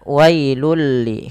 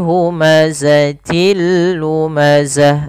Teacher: maka langsung masukkan bunyi tanwinnya kepada huruf lam dan diganti bunyinya menjadi bunyi lam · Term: idgham bila gunnah